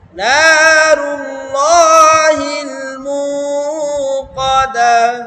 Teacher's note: যাদের মুখস্থ আছে তারা মুক্কদা পরে আসছে বেশিরভাগ। মুক্কদা ধাক্কা দিয়ে পড়ছে, ধাক্কা হবে না এখানে